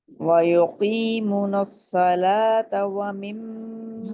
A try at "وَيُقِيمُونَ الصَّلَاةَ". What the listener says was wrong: وَيُقِيمُونَ الصَّلَاةَ، میم پیش واؤ، واؤ مدہ ہے نا تو اس کو مس نہیں کرنا. باقی سب پرفیکٹ تھا، جہاں پہ واؤ مدہ مس ہو رہا تھا.